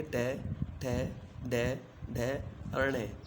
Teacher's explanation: इन वर्णों का उच्चारण करते समय जिह्वा ऊपर के दांतों के साथ ऊपर खुरदरे हिस्से मूर्धा का स्पर्श करती है। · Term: मूर्धन्य